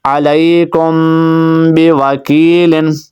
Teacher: میم کے بعد با آ گیا تو غنہ کریں گے